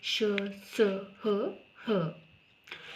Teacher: आगे है ऊष्म व्यंजन। ऐसे व्यंजनों के उच्चारण के समय प्रश्वास वायु को संघर्ष करते हुए बाहर निकलना पड़ता है, इन्हें संघर्षी व्यंजन भी कहते हैं